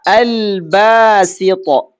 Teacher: Lam sukunnya kedengeran. Itu namanya izhar itu. Izhar itu jelas kedengeran. Al-basito. Al-ghafur ketemu ghain.